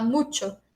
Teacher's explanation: Esse U não é nasalizado no espanhol. Então, não acontece espalhamento do traço nasal no espanhol, mas no português aqui, nesse exemplo, acontece.